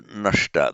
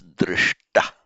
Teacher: where you get a sh followed by a ta, they both become retroflex.